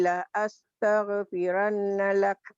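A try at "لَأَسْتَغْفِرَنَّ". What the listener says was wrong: astaghfiron, bukan piran, piron maci, ro. Bukan salah lidahnya, lidah piro maci. La astaghfiron.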